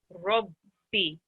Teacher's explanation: it's only the B sound you sit on. The E, the kasra is not elongated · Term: Tashdeed